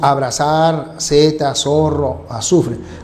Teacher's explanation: el sonido interdental, que nosotros no producimos. Nosotros pronunciamos este sonido como si fuera S. Nadie dice abrazar, nadie dice Z, nadie dice zorro o azufre.